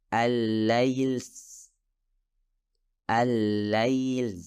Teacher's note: keluarnya suara siulan bersamaan dengan suara lam